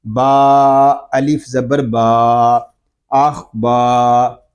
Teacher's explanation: آگے الف مدہ ہو رہا ہے، با کو ہم ایک الف تک کھینچ کر پڑھیں گے